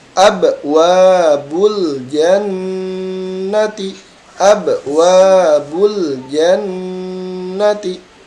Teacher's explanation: Ingat huruf nun juga dia adalah huruf khaysum. Maka tekan terlebih dahulu sebelum dilepas ya.